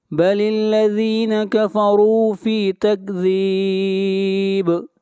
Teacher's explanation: را کو موٹا پڑھیں گے، اور را کے اوپر پیش ہے